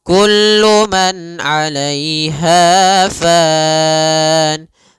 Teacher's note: Pada lafal kullu man di sini ada izhar halqi, yaitu suara nunnya dibaca dengan jelas ketika bertemu dengan huruf ain